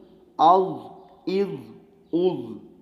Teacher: حمزہ زبر ضاد اض، حمزہ زیر ضاد اض، حمزہ پیش ضاد اض، اض اض اض۔ ایک درمیانی سی آواز نکلے گی، نہ بالکل دال کی آواز نکلے اور نہ ہی صفیریہ حروف زا۔ اور دوسری بات یہ کہ یہ ضاد بھی مستعلیہ حروف میں سے ہے، اس کو موٹا پڑھیں گے۔